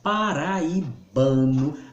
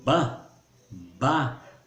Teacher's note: Quando a gente forma paraibano, a sílaba tônica é ba, ba.